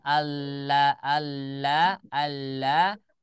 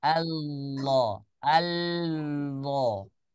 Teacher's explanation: Contoh membaca huruf Allah adalah ketika kita membaca huruf lam itu kaidah awalnya ketika kita mengucapkan huruf lam la itu kaidah awalnya adalah dibaca tarqiqo ya dibaca tipis. Tetapi ketika kita mengucapkan Allah ya dari asalnya rahangnya rahang tipis, rahangnya istifal, maka berubah menjadi isti'la. Jadi yang pertamanya Allah, Allah, Allah, kita naikkan rahangnya.